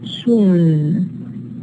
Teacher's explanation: The vowel is nasalized in soon